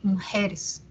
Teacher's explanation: la U de mu parece que tampoco suena